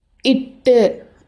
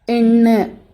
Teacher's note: நாக்கோட நுனி மேலே போய் அன்னத்தோட நுனியை கொஞ்சம் பின்னாடி போய் தொடும். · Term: பின் நுனி அன்ன ஒலி